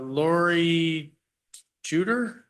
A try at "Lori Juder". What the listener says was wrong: It's actually pronounced yeetus. The J is like a Y.